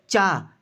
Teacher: चा आप बोलेंगे तो आपकी जीभ बिल्कुल तालु से टकराएगी